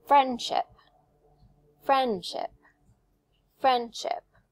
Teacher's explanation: Friendship has two syllables. The strong stress is on the friend. So I say it a little higher, a little clearer, a little louder.